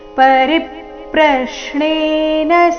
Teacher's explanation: ರಿ ಮೇಲೆ ಆಘಾತ ಪ್ರ ಮೇಲೆ ಆಘಾತ ಬರಬೇಕು